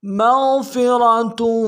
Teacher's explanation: لہم مغفرۃ، مغفرۃ، میم کو غین کے ساتھ ملانا ہے، غین کو موٹا کریں گے